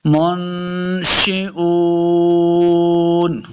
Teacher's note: نون ساکن کے بعد شین ہے حروف اخفا سے غنہ کریں گے، منشئون، وقف کرنا ہے، حمزہ نون ساکن ہو جائے گا، منشئون.